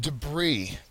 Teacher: it's almost as though the S is silent okay uh so debris has the second syllable accented · the word is pronounced debris it's almost as though the S is silent